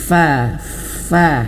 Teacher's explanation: Makhrajnya di sini bibir bawah. Perut bibir bawah menyentuh ujung gigi seri atas. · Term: huruf fa